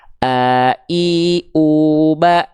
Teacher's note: Hamzah ditenggorokkan paling bawah kita